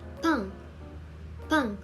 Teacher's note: This consonant is a tense version of piyup. It is pronounced with more tension, similar to a hard P sound